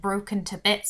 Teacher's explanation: it's that plosive b it makes it quite violent